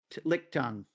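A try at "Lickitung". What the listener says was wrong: Lick tongue is damn close. It's a lick a tongue. Yeah, you missed that little syllable in the middle.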